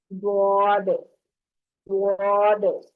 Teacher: زبان کے کنارے کو دائیں یا بائیں، رائٹ یا لیفٹ، اوپر کی داڑھوں کی جڑ سے لگانے پر ضاد ادا ہوتا ہے۔